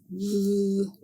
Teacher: To make the sound of the voiced th, thh air is blocked by the tongue in light contact with the teeth